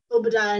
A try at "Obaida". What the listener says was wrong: Cut a syllable out.